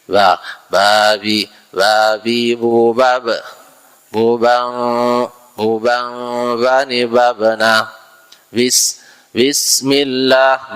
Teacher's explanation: itu tadi ee jahr dan sidah dia suara tahan dan e napas tertahan tidak ada sifat hamesnya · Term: huruf ba, jahar dan syiddah